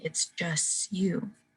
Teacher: For example, when you say, it's just you lose the T at the end of just to prepare for that U sound. So you say, it's just you. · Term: assimilation